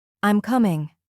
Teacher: Now say this statement. I'm coming. Your tone goes down.